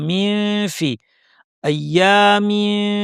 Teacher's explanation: ফা এর মাখরাজে দাঁত নিয়ে যাব এবং নাক থেকে গুণনা করব। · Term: ইখফা